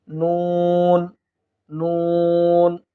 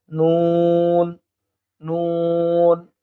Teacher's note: জিহ্বার অগ্রভাগটা উপরের তালুর সঙ্গে লাগিয়ে দিলে আমরা নুন হরফটি পেয়ে যাব